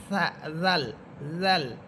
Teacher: জাল এটা ছায়ের মত হবে। জিহ্বার আগা সামনের উপরে দুই দাঁতের আগার সাথে লাগবে। জাল জাল এবং জাল হরফটা নরম করে পড়বেন।